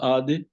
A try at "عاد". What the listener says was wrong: پڑھیے یا عادن پڑھیے، بلکہ بہتر ہے آپ عاد ہی پڑھیں.